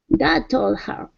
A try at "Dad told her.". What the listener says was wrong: Okay, drop the H. Told her. Told her.